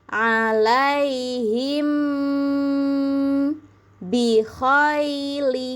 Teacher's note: emnya harus ditahan dulu yang lama.